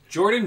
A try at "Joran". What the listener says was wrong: This is Joran Vandersloot. You said Jordan.